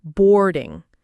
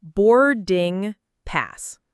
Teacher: Boarding has two syllables with a stress on the first syllable.